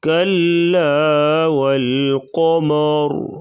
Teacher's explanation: کلا والقمر، کلا کاف بریک اور لام کو بھی بریک پڑھا جائے گا، والقمر قاف کو پر پڑھیں گے، قمر وقفاً را کو پر پڑھا جائے گا، را ساکن ہو جائے گی تو را ساکن ما قبل زبر تو را کو پر پڑھا جائے گا